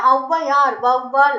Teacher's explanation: தனித்து வரும்போது இரண்டு மாத்திரை அளவுல ஒலிக்கும் இதுவே அவ்வையார் வவ்வால் அப்படின்னு சொற்கள்ல முதல்ல வரும்போது இரண்டு மாத்திரையிலிருந்து ஒன்றரை மாத்திரை அளவுல குறைஞ்சு ஒலிக்குதாம் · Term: அவகார குறுக்கம்